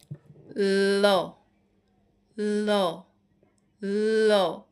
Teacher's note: জীভের ডগা দন্তমূল স্পর্শ করে · যেসব ব্যঞ্জন ধ্বনি উচ্চারণের সময়ে আমাদের যে জীভের যে আগাটা এই যে জীভের ডগা মানে সামনের অংশ সেটা দন্তমূল স্পর্শ করে এবং ফুসফুস থেকে যে আমাদের ফুসফুস থেকে আসা যেই বাতাস সেটা জীভের দুই পাশ দিয়ে বেরিয়ে যায় তাকে পার্ষিক ব্যঞ্জন বলে। · আমার জিভের ডগাটা দন্তমূল স্পর্শ করছে এবং এই যে বাতাসটা ল, এই যে ল এরকম হচ্ছে, আর এই 2 সাইড দিয়ে হচ্ছে বাতাস বেরিয়ে যাচ্ছে, তাহলে এটাকে কি বলা হচ্ছে, পার্শ্বিক ব্যঞ্জন।